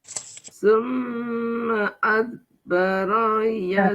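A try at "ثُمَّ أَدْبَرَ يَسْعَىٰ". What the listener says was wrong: Bu, dalnya mantul.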